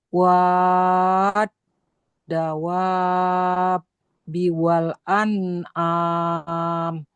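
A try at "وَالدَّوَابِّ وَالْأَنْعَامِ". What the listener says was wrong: Wa pertama enggak. Wa kedua baru. Wad. Wad. Coba tambah lagi dikit, Bu. Kurang. Yang wa ini, yang tadi wa panjang. Tadi kurang panjang.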